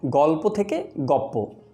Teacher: গল্প বানানে যুক্ত বর্ণটির পরের ব্যঞ্জন পয়ের প্রভাবে আগের ল ব্যঞ্জনটিও পরেরটির ন্যায় প হয়েছে, ফলে গল্প হয়েছে গপ্প। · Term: পরাগত সমীভবন